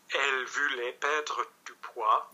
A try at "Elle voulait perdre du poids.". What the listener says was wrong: Good. Now, don't think holding back on them is going to make it easier. Give me more of everything